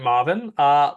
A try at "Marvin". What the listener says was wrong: Marvin. With an R. Marvin.